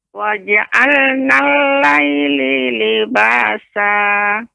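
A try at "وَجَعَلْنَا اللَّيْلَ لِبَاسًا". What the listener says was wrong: Laila, Nek. Ya, harokatnya. Waja'alna laila.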